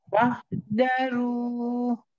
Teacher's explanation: Bukan da, tapi za. Keluar lagi lidahnya.